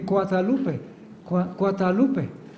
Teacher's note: No hay consonantes Sonoras todas las consonantes son sordas · los indígenas no tienen el sonido G sería cuadalupe